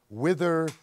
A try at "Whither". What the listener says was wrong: I do want to point out that it's Whither with an H, not like, anyways. Whither. Whither.